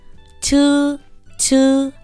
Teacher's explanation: CH bật hơi mạnh hơn